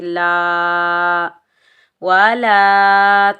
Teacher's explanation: لام کے اوپر زبر، آگے الف خالی ہے، یہ الف مدہ ہے، اس کو ہم ایک الف کی مقدار کھینچ کر ادا کریں گے